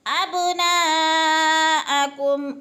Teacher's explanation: اب پہ بھی قلقلہ ہو رہا ہے کیونکہ با حروف قلقلہ میں سے ہے، ہلا کے پڑھنا ہے ، ابناءکم، نا پہ مد متصل، چار حرکات کے برابر نا